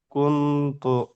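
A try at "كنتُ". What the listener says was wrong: হ্যাঁ, এখানে অনুষ্কার মতো নিয়ে আসবেন, কুং তু, কুং তু।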